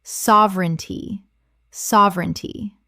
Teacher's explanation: Three syllables in natural speech. The middle syllable collapses.